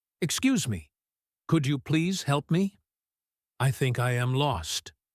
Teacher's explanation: Notice how the voice goes up a little bit at the end of the question.